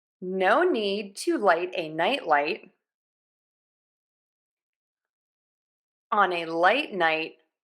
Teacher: N, you touch the back of your top front teeth.